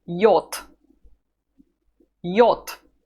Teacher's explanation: loses its voice just because it's at the end of the word it happens to all the voiced consonants